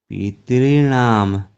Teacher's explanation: उपग्रह, पितॄणाम, दो ता का उच्चारण नहीं होगा, पितॄणाम, दो ही हो रहा है। पितॄणाम, री को ही दीर्घ करना है, ता को डबल नहीं।